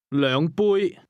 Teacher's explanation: The word cups is pronounced with a high level tone.